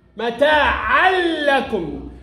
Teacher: خلي بالك التنوين بيدخل في اللام مفتوح